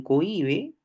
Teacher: hay un hiato acentual porque tienes una vocal cerrada tónica, o sea, la I, que es donde recae la tilde, y a esa I le antecede una vocal abierta átona.